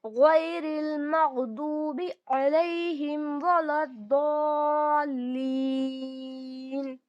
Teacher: सौद को मोटा पढ़ेंगे, हरूफ मुस्तालिया है, हमेशा मोटा पढ़ा जाता है